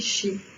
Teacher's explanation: Oui, ça devrait être si, sauf que le S ne se prononce pas S en gaélique. Il se prononce ch. Donc en fait, ça se dit chi.